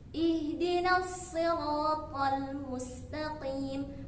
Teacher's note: Jadi ketika shad itu berharakah kasrah, maka tetap dibaca tebal. Namun tingkat ketebalannya itu berbeda ketika shad berbaris fathah ataupun dhammah.